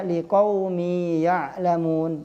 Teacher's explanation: Dua harkat, liqaumi, mi, baru langsung ke ya, ya'lamun. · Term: mad